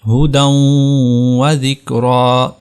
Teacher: یہ یا جو ہے یہ یا زائدہ ہے، یہاں پر اس کو ہم نے گرا دیا اور اس دال کو ہم نے کنیکٹ کیا واو کے ساتھ، ہدی و ذکری، وجوہ یومئذ برحمت منہ۔